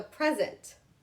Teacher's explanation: With the thing, the gift, I'm putting emphasis on the first part, present.